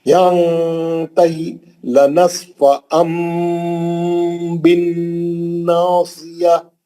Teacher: نصفام میں اخلاب ہے، تنوین کا نون کو میم سے بدل کے غنے سے پڑھیں گے کیونکہ اگلا حرف با ہے. اخلاب کا ایک ہی حرف ہے با.